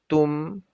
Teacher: Ma'abadtum. Lebur huruf dalnya menjadi huruf ta. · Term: idgham